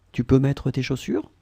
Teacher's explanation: It's a question, so we will raise the voice at the end.